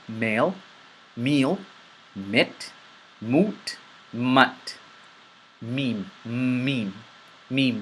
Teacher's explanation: Meem, you push the sound out of your nose. Similar or identical to the letter M.